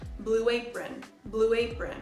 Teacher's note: blue ends with this ooh sound so if we want to say Blue Apron we add the W sound in the middle